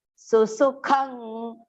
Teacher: Both the sus are partial here. Do not make it long.